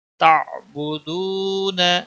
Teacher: یہاں پر واو مدہ ہے، واو ساکن سے پہلے پیش ہے، ایک الف کے برابر اس کو کھینچنا ہے